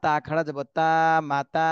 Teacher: তাহলে তাতে এক আলিফ টান দিতে হবে খাড়া জবর রয়েছে